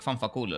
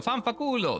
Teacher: They put a lot of emphasis in the phonic of L. And they kind of stretch the L sound.